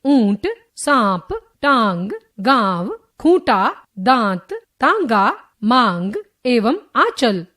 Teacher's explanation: ख अनुनासिक सेमीनेजल इस ध्वनि का उच्चारण करते समय हवा नाक और मुख दोनों से बाहर निकलती है।